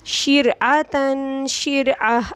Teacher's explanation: را ساکن سے پہلے والے حرف پر زیر آ گیا تو اس کو ہم باریک پڑھیں گے